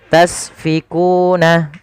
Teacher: alirkan nafasnya karena sin punya sifat sofir. Sifat pertama hamus, ada sifat sofirnya berdesis ya.